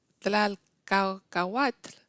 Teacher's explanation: contiene no solamente sonidos que no existen en español, pero sobre todo secuencias de sonidos que son muy difíciles de pronunciar, como una T con una L.